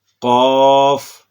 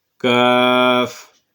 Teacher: یہ دونوں حروف جو ہیں یہ زبان کی جڑ سے ادا ہوتے ہیں، لیکن قاف زبان کی جڑ اور تالو کے نرم حصہ سے ادا ہوتا ہے، جبکہ کاف یہ زبان کی جڑ اور تالو کے سخت حصہ سے ادا ہوتا ہے